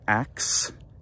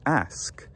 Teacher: a lot of people in english can be heard to say ax instead of ask because the s k sequence isn't very common in english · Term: metathesis